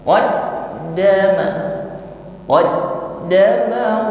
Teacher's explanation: Huruf dal dengan tashdid sama dengan huruf ba dengan tashdid, keduanya memiliki karakteristik shiddah, yaitu menahan aliran suara.